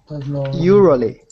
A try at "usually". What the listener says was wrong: It sounds a bit like you're saying Urally. Ural. It's usual. Do you know television? Je. How do you say je? Now say you, like in boot. Usually.